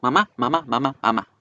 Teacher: como no hay por dónde salir el aire el aire se va por la nariz entonces debe vibrar y la diferencia entre español y en inglés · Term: consonante nasal